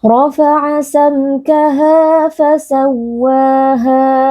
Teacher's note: Ra huruf tebal kita angkat pangkal lidah